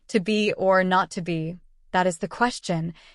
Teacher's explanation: exemplifies I Amic pentameter with its rhythmic flow of 10 syllables divided into five Iams